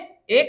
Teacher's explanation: कंठ और तालु से ए का उच्चारण होता है